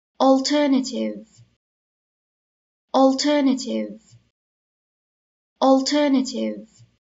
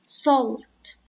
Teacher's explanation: انتبهوا لحرف الـ A، نلفظه O لما بيجي بعده LT، مثل كلمة ملح salt.